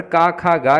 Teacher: का खा गा में आपका कंठ तथा जिह्वा मूल आ जाते हैं।